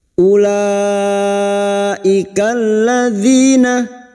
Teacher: Ulaika bertemunya mat dengan hamzah dalam satu kalimat mat wajib mutasil. 5 harokat kita panjangkan. Huruf waw di sini tidak berfungsi sebagai mat, maka u kita baca pendek.